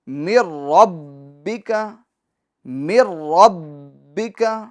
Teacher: اچھا، یہ را پور بھی ہوگا کیونکہ را مشدد پر زبر ہے. اور با میں جمع والا قلقلہ ہوگا، کیونکہ حروف قلقلہ جب مشدد ہو تو انہیں جماؤ کے ساتھ پڑھا جاتا ہے، انہیں آواز مخرج میں کچھ دیر کے لیے رک جاتی ہے.